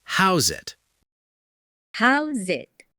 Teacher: The S in house and the I in it turn into a Z sound.